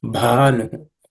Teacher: Bha is the fourth letter in the per varga, per class of sounds. It has to be aspirated as bhanu, okay, to the extent possible.